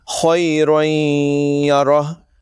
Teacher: یعنی تنوین کو یا میں ملا کر غنے کے ساتھ پڑھیں گے۔ یاد رکھیں دونوں جگہ ناک میں آواز لے جا کر ایک الف کے برابر غنہ کریں گے، یعنی تقریباً 1 سیکنڈ۔ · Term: ادغام